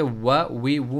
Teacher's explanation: दोनों होंठों के बीच से जो है वाव की अदायगी हो रही है। दोनों होंठ इसमें जो है वो अमल में मसरूफ़ है, वो फी फू।